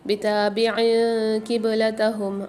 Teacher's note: بتابع قبلتہم، عین کے نیچے دو زیر ہیں، دو زیر کی تنوین کے بعد افعال غنہ کے 15 حروفوں میں سے قاف آ رہی ہے، یہاں پر بھی ہم غنہ کر کے پڑھیں گے